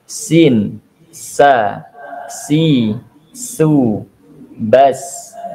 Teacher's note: ketika mengucapkan huruf Sin itu lidah bagian dalam ini turun ke dasar artinya tidak dinaikkan ke atas nah sehingga kalau kita mengucapkan Sin ini pasti keluar suaranya tipis